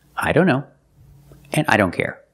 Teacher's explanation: here the t is between consonants so we don't pronounce it